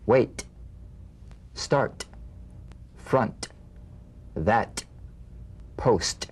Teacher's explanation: The unvoiced T, tongue front palatal stop consonant, cognate to the D. The same staccato springing action as the D drum beat, with no voice, forms the light tap of the T.